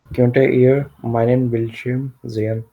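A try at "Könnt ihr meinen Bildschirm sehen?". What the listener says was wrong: So the way you say it, you say kyonta iya. It's not kyonta, it's just kyont. Kyont iya meinen Bildschirm sehen.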